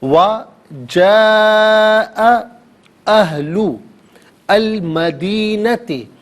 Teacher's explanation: وَجَاءَ أَهْلُ الْمَدِينَةِ، اب یہاں پر جاء میں مد متصل ہے، اس سے مد واجب بھی کہتے ہیں، مد لازم بھی کہتے ہیں، اور اس کو منیمم ناظرین 4 الف کی مقدار کھینچ کر پڑھنا ضروری ہے، اور میگزیمم اس کو 6 الف کی مقدار کھینچ کر پڑھا جا سکتا ہے